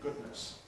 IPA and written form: ˈgʊdnəs (goodness)